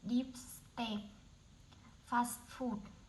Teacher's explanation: Main stress on the second part